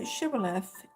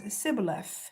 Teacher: the members of the central hill country tribe of Ephraim could not make a sh sound and instead pronounce an s